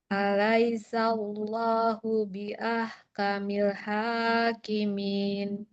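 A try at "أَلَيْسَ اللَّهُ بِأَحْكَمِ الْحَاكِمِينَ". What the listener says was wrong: Sekarang alirkan dulu lamnya. Kamil hakimin. Jangan kamil ha, jangan.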